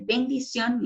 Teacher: como es en el caso de bendición y termina en n tiene mayor fuerza de voz en la última sílaba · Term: aguda